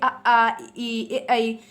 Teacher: अव्रतमुखी मतलब आपका व्रत नहीं बनेगा, आपके होंठ गोल नहीं होंगे, तो बोल लीजिए आ ई ऐ।